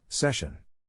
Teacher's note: To pronounce session, have in mind that the size of the syllable indicates where the accent or stress is. In this case, the accent is in the first syllable, corresponding to sesh.